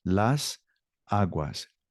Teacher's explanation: that S in las breaks up the 2 A's.